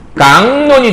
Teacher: 최종 발음 보게 되면 각론이 깡론이 됐잖아요. 그럼 기억이 이렇게 해서 이응으로 바뀌었어요.